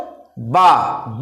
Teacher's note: यहां पर दांत का कोई अमल दखल नहीं है सिर्फ होठ है दोनों होठ मिले